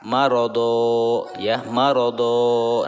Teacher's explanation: sehingga harokat tanwin itu tidak lagi dibunyikan, maka tidak lagi dibaca marodon, tidak lagi seperti itu. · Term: mad iwad